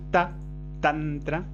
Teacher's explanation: Luego vienen los sonidos dentales en los dientes superiores.